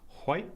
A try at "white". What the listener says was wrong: There's an H in there.